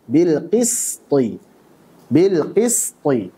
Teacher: Suara yang tajam karena mengalir dari celah yang sempit. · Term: safir